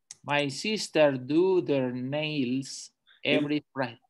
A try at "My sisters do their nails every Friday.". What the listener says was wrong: Careful, because you're not pronouncing this S. My sisters.